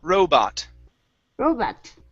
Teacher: So stress is at the beginning, and it's an O-ah.